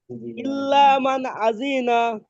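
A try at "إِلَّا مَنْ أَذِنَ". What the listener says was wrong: ভাই আজি জি টান দেন না।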